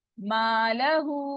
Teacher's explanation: उल्टा पेश भी टू काउंट होता है, मद हो रही है, आगे हमजा आ रहा है, तो इसको कितना काउंट करना है हमने? 4 काउंट स्ट्रेच करना है